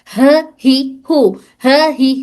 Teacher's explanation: ये ह हलक के निचले हिस्से से अदा हो रहा